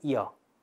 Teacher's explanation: J와 아가 결합해서 이를 짧게 하고 뒤에 아를 연속해서 발음하시면 야가 나오죠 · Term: 반모음